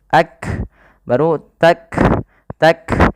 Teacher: kaf memiliki sifat salah satunya sifat syiddah. yaitu suara kita tertahan. Ak. Kemudian ada nafas yang dikeluarkan ketika melafalkannya yang di mana kaf juga punya sifat namanya hames.